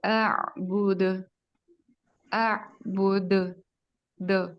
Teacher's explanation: پورا جھٹ یعنی ایک آواز کا پلٹ کے آنا